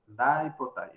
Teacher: Esta I es una I que se nasaliza, pero que es la I de la negación con na, hace conjunto con na.